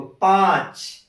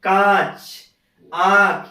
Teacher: और जैसे यहाँ पे देखो, पांच, मुख और नाक दोनों से हो रहा है। कांच, आंख, ये सब का उच्चारण मुख और नाक दोनों से हो रहा है · अनुस्वार का उच्चारण केवल और केवल नाक से, लेकिन अनुनासिक का जो उच्चारण होगा वो मुख व नाक दोनों से होगा